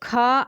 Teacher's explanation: कंठ से भी बोला जाता है, स्पर्श व्यंजन भी है, अघोष भी आता है और ये महाप्राण भी है